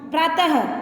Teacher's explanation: इसका उच्चारण ह की तरह होता है, इसे विसर्ग भी कहते हैं · जैसे ही हम प्रातः त बोल रहे हैं तो ह की आवाज़ आ रही है, तो व्यंजन के तुरंत बाद इसका प्रयोग होता है।